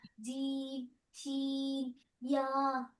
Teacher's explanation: জিমটা একটু বেশি শক্ত, শিনটা জিমের থেকে ইয়াস একটু কম, আর ইয়াস জিমের থেকে ইয়াটা আর একটু কম শক্ত। তিনটাই শক্ত করে উচ্চারণ হবে, কিন্তু এর মধ্যে হচ্ছে জিমটা একটু বেশি শক্ত, তারপরে শিনটা আরেকটু কম শক্ত, তারপর ইয়াটা আরেকটু কম শক্ত।